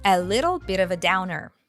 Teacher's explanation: It's all connected, and we hear that the T's are pronounced as a flap T, like da-da-da.